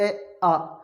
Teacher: अब कंठे में जो हमारे पहले 2 स्वर होते हैं, ये कंठे में थे ए और आ, उच्चारण करते ए आ, तो कंठ से हो रही है